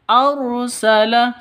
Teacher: ro tafkhim tebal ya ro tafkhim harus ditebalkan